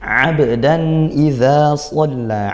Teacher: ain dibaca sesuai dari makhrajnya yaitu tengah tenggorokan, jangan dibaca hamzah.